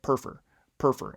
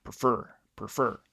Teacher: if the stress is on the first syllable it would be more like perfer perfer as opposed to prefer